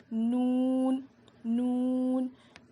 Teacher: زبان کے کناروں کو لیفٹ اور رائٹ سائڈ کے داڑوں میں لگانے سے نون ادا ہوتا ہے. اسے بھی ہم 5 الف کے برابر کھینچ کر پڑھیں گے.